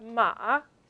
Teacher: the word for horse it happens to have a falling rising tone